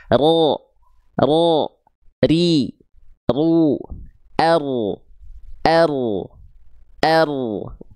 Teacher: Getarannya tetap ada tapi tidak berlebihan. Sedikit saja tapi tetap jelas, tegas. Ro kedengaran getarannya. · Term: takrir